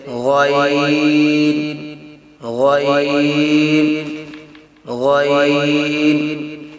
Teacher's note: ادنی حلق سے غین ادا ہوتا ہے